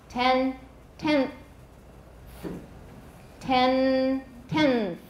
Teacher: My tongue will get ready to make that TH and it's going to stick out early. It's going to stick out before it's time. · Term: assimilation